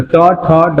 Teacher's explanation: मूर्धन्य, जो मूर्धा से बोले जाते हैं। ठीक है, कंठ से थोड़ा ऊपर से।